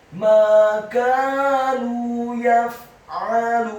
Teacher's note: huruf ain-nya ditekankan keluar dari tenggorokan bagian tengah, fathah 1 harokat. Huruf lamnya dibaca tipis, dhammah 2 harokat karena setelahnya ada huruf wawu sukun.